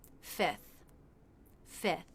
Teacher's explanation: You might sometimes hear a native speaker simplify this by dropping the F before the TH.